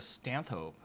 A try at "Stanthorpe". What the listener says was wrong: There's an R in there. I would think Stanthorpe.